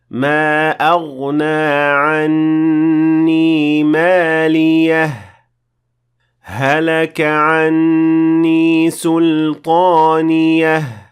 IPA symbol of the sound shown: h